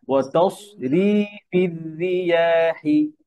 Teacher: ওয়াতাসরি মোটা হয়ে যায় আপনার র, সদের পরে র পাতলা